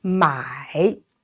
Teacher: So it's AI is pronounced I. Here it is a third tone, so down and rising.